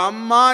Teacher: அ குறில் அதுக்கு ஒரு மாத்திரை ம் அதற்கு அரை மாத்திரை மா என்கிற நெடிலுக்கு ரெண்டு மாத்திரை இந்த மூன்றரை மாத்திரை ஒலிப்போடு அம்மா என்கிற சொல்லை உச்சரித்தால் அது இயற்றமிழ் இதை